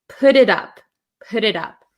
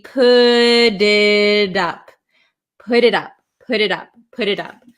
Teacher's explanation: between two vowels a lot of the times in American English it's going to turn into a flap T which sounds like a d